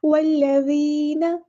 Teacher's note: یہاں مد آ گیا. والذین، نون کو لمبا نہیں کریں گے. والذین غلط ہو جائے گا.